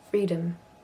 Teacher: And the O in freedom is a schwa.